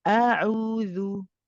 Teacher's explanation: for the hamza, for example, it's very relaxed, it's the bottom of the throat.